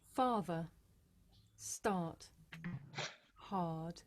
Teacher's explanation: This is a long vowel sound. It's pronounced ah.